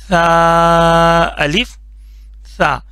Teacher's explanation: बिल्कुल लाइट करके सॉफ्ट करके पढ़ना है इसमें सीन का साउंड नहीं बनाना